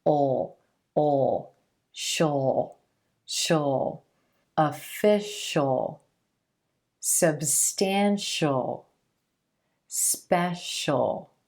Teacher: to listen for the sound that comes right before the suffix when the sound right before the suffix is the shh-shh sound then you're gonna pronounce the suffix as just the dark L as just a single syllable